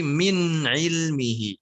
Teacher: min ilmihi, nunnya jangan dipantulkan. Jangan minni, tapi min ilmihi.